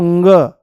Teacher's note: जैसे ही आप बोलोगे तो वायु जो है वो मुंह से नाम मात्र के लिए बाहर निकलेगी पर नाक से ज्यादा निकलने की कोशिश करेगी